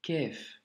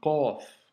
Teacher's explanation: Le Qaf, c'est une lettre, comme tu peux l'entendre, emphasée. Donc, c'est une lettre emphatique, elle doit remplir toute la bouche quand tu la prononces, et il ne faut du coup surtout pas la confondre avec le kef, tu vois. · il faut vraiment que ça sorte du fond de la gorge et que c'est un son qui remplisse la bouche